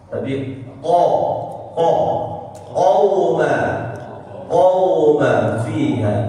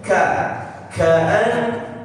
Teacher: Qaf dia tidak pakai udara ya. Bukan qa, tapi qa, qauma fiha. Kemudian huruf kaf baru pakai udara. Ada udaranya dia.